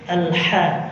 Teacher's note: Ha ya, tengah-tengah tenggorokan. Dia punya sifat namanya hamas.